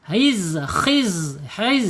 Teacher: harus sofir ya ada suara desis